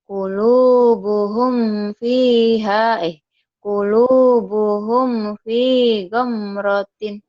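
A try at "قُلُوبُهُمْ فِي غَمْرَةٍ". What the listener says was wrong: Qulubuhum fi, bukan fiha. Qulubuhum fi gomrotin. Diulang lagi.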